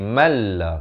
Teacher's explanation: Malla di sini idgham bila gunnah. Daripada man la jadi malla, masuk tanpa dengung.